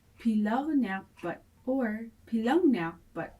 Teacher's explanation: Nere nyakpa pilak plus nak plus put. KN assimilates to GN or N with the tail N.